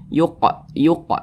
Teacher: huruf qf termasuk kepada huruf Qalqalah ketika dia sukun dipantulkan lagi yuq yuq mantul seperti itu dan ini tergolong kepada Qalqalah Sugra